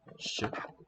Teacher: And the sh is a voiceless palatal.